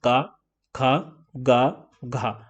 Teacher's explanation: यह हमारा यहां पर गला है यहां पर तो इस गले से ही सारे वर्ण निकल रहे हैं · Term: कंठ